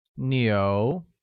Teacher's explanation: is pronounced with the mid rising tone